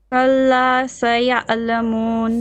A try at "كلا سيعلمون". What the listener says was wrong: Don't say قل, it's flat.